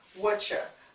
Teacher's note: Whatcha. So we're just dropping the u dropping the r. Just whatcha. U turns into cha.